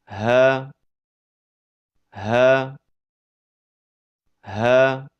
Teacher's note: Huruf ha keluar dari pangkal tenggorokan